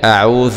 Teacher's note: العين مخرجها من الحلق